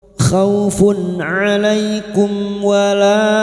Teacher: Alaikum mim sukun bertemu waw idhar safawi, mim sukun dibaca jelas tanpa mendengung.